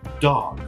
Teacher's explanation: caso de dog tem esse o que não é exatamente o ele é um ó com uma pitadinha de um a